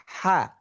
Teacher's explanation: তো হা যখন উচ্চারিত হচ্ছে, লিসানুল মিজমার কিন্তু হালকা, একটু হালকা ফাঁকা। · হা বাতাস পুরোটাই রূপান্তর হয় না, কিছু অংশ রূপান্তরিত হয়, বাকি অংশটা বাতাস বের হয়ে যায়, ঠিক গোল হার মতোই।